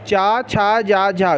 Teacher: तालु से बोलने वाले चा, छा, जा, झा, जब बोलेंगे तो जीभ तालु पे स्पर्श होती है